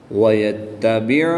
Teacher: عین ساکن کو جھٹکا نہیں دیں گے بلکہ عین کی ادائیگی کا خاص خیال کرتے ہوئے پڑھیں گے